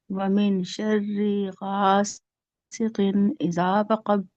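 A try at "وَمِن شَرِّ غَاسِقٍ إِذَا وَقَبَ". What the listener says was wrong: दोबारा पढ़िए, मीन गुन्ना कीजिए।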